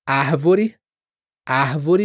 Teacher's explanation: Pode ter esse som aspirado aqui do R, árvore, como no Rio de Janeiro, que vai ser diferente do barato.